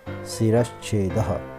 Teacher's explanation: विसर्ग के बाद छा है तो विसर्ग बदलकर श हो गया। सिर प्लस श प्लस छेदः, सिरश्छेदः। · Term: तालव्य श